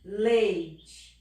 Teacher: eu falo o E mais forte, lei. O I quase não sai, Sai só no finalzinho, ó. Leite. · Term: semivogal